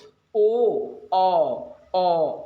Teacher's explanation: अरे व्रतमुखी वो जैसे आप साउंड निकाल लेंगे तो आपका मुंह जो है ना बिल्कुल गोला गोला हो जाएगा, छल्ला हो जाएगा